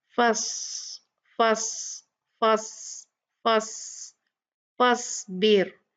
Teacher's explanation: صاد heavy letters میں سے ہے، مستعلیہ ہے تو اس کو ہم ہیوی پڑھیں گے، یہاں پر یہ ساکن ہے تو اس کا جو حمز، اس کی ہوا جو ہے بہت ہی کلیئر ہوگی